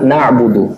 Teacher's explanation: Kemudian bainiah antara mengalir dan tertahannya suara. Dia tidak begitu mengalir suaranya dan dia juga tidak begitu tertahan suaranya. Huruf ain. Contohnya ketika mengucapkan huruf ain sukun pada kalimat na'budu.